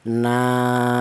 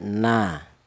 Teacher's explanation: Jadi, alifnya ini menjadi mad thobi'i itu didahului huruf yang berharakat fathah. Jadi, fungsinya alif ini memanjangkan bacaan huruf nun ini.